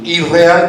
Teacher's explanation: esta N se asimila con la R, que como ya está, se transforma en una segunda R. Por eso irreal viene de inreal, y si lo intentamos pronunciar es más fácil, irreal que inreal.